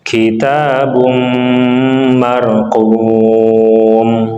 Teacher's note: Kitabum ada domatain bertemu dengan mim disebut dengan idgham bi gunnah, maka kita tahan.